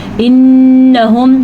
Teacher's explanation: نون پہ شد ہے تو نون کا غنہ ہم ادا کریں گے